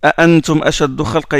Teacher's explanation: ils les prononcent toutes les deux les hamza, les autres non. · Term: tahqiq